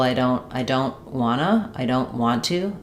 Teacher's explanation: Sometimes in casual speech you'll hear that T just completely gone.